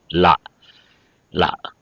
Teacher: நாவினுடைய அதாவது நாவினுடைய இரு பக்கங்களும் தன்னால தடிக்கும் · பற்களனுடைய மேல் பள்ளியினுடைய அடியை தொடுவதாலே இந்த லகரம் தோன்றும்